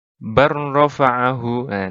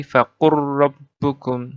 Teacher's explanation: dengan mengabaikan huruf pertama dan membaca huruf kedua secara tasydid, bertasydid. Jadi dipantulkan, ditahan lalu dikeluarkan, seperti itu. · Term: idgham mutaqarribain